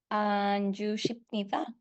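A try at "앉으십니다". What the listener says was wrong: Muy bien. Anjushipnida. Excelente, porque termina en consonante,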